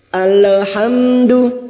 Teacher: lam sukun jangan dipantulkan, hanya masuk